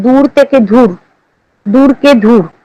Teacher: অল্পপ্রাণ ধ্বনিকে মহাপ্রাণ ধ্বনি রূপে উচ্চারণের প্রবণতা দেখা যায়